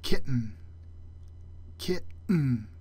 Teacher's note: The glottal stop, indicated by this sort of question mark looking symbol, is the sound we make in the middle of the word kitten.